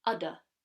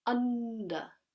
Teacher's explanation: Just the knowledge that you're going towards an N has a backwards effect on the previous vowel and nasalizes it naturally. So when we say udder, there's no nasalization.